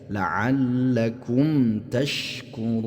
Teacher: Jadi mim sukun bertemu dengan ta. hukum bacaannya adalah izhar. Ya, walaupun bukan izhar halqi atau izhar mutlak tapi di sini adalah izhar syafawi.